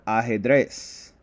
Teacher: The natural accent falls on the last syllable